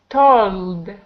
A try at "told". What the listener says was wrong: There you go.